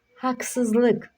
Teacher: Sondakı da x şəklində. Çünki q samiti sözün sonunda gələndə x kimi tələffüz olunur.